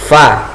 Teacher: Jadi ketika kita ucapkan fa, ini ada nafas atau ada udara yang keluar. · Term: hamas